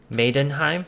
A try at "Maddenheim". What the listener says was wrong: It's pronounced Maddenheim, not Maidenheim.